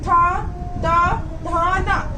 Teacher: हमारी जीभ दांतों से टच होकर निकलती है, तो दंत वाले वर्ड बोले जाते हैं